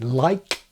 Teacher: In English, the ejective sounds that some speakers use, as in like, are most common, phrase finally